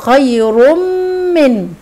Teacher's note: خير من تنوين وبعديه مم والميم من حروف الادغام يبقى ادغام كامل بغنه